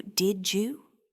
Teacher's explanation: the D sound at the end of did frequently blends with the Y sound at the beginning of you to create a distinct ju sound. So, did you transforms into did you?